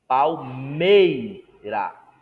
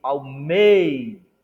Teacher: Perceba que a ênfase não é no I, mas no E. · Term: ditongo decrescente